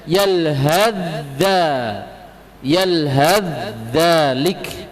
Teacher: Apabila diwasol diidgham, dimasukkan ke huruf setelahnya, huruf dha. Jadi bacanya yalhadza, yalhadzalik.